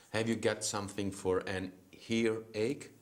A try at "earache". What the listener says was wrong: Earache. There's no H before ear and there's no H before ache. So it's earache, earache.